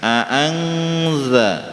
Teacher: Angza masuk kepada huruf zalnya. Ya, huruf zal ujung lidah ketemu dengan ujung gigi seri atas